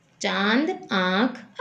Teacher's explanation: इसका उच्चारण मुख और नासिका की सहायता से होता है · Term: अनुनासिक